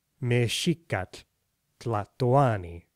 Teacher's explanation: Nahuatl is known for that distinctive t, and for this saltillo, skip, or glottal stop that's often between a vowel and a consonant.